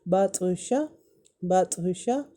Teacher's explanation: طا میں کیونکہ یہ حروف قلقلہ میں ہے تو اس کی ساؤنڈ ریپیٹ ہوگی، بطشہ بطشہ۔